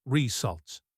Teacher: the stress is on the second syllable, and the RE sound at the beginning is more like the short I sound in sit, not the long A sound in day.